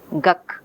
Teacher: Okay, instead of saying the, which requires moving the place of articulation, the child is staying with velar articulation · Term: assimilation